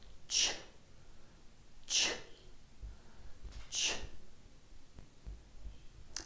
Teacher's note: The ch sound is from the consonant pairs group and is called the voiceless palato-alveolar affricate. This means that you create friction by first stopping the airflow with your tongue at the ridge behind your teeth, then releasing it through a narrow gap. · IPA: /ʧ/